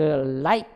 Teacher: 자, 근데 우리가 공기의 흐름은 L 사운드를 제외한 나머지 자음 소리를 만들어낼 때 공기가 이 구강의 중앙으로 흘러가요. 그런데 중앙이 아니라 혀의 양옆으로 흘러가면서 나는 소리가 있어요. 그게 바로 L 사운드예요. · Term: lateral L